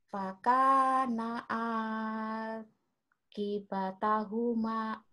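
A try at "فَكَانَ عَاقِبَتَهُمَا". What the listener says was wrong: iya gitu tapi a-nya jangan panjang-panjang banget ya Bu ya fakana a fakana akibatahuma fakana a fakana akibatahuma belajar intonasi, belajar panjang pendek, belajar lagu juga. Tapi ingat, lagu boleh, tapi panjang pendeknya harus benar.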